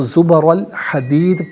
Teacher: زبر الحدیدی، یہاں وقف کریں گے تو زبر الحدید پڑھیں گے، دال ساکن ہوگا لیکن وقف میں آواز لوٹتی بھی محسوس ہوگی، کیونکہ یہ حرف قلقلہ ہے